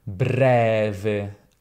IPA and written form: ˈbrɛve (breve)